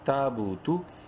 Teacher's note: یا تیا کو مت، تا الف زبر تا الف مدہ ہے، تا کو ایک الف برابر لمبا کریں گے